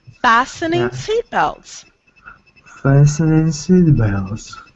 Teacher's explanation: That T is silent. Fastening. Yes, because it's too difficult to say with a T, so we remove the T.